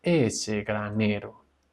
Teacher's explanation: empieza a descender ese granero con el acento en ne. Ese granero.